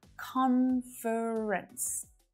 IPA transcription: 'kɒn f(ə) rəns